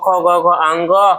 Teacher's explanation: ख ग घ अंग, ह और विसर्ग का उच्चारण कहाँ से होता है, कंठ से। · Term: कंठ वर्ण